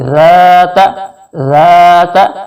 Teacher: نرمی سے ادا کرنے کا طریقہ کیا ہوتا ہے کہ زبان کی نوک کو اوپر والے دو دانتوں کے نیچے لگا کر پڑھیں تو ذال میں نرمی پیدا ہو جائے گی. ذات ذات, اور یہ ستا کو کھینچنا نہیں ہے, جلدی سے پڑھنا ہے.